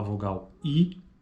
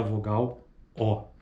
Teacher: A vogal I, veja, não há arredondamento dos lábios, então é não arredondada. E a vogal O, olha só, é arredondada.